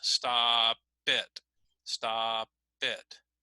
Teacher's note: notice how the P is going to sound like it goes with the next word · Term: consonant vowel linking